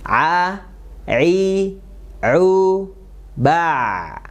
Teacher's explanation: di tengah tenggorokan Tengah tenggorokan dan sifat hurufnya tipis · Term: huruf Ain